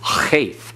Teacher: Cheth, you have the throat constricting. You have that glottal stop. And you have that guttural sound that comes through.